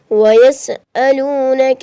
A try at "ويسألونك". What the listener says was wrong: हमजा है या आइन है? आइन नहीं है, हमजा है